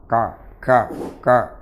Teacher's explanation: Kalau syiddahnya yang terlalu banyak, hamsnya terlalu kecil ataupun tidak ada, ka, maka akan berubah menjadi qaf.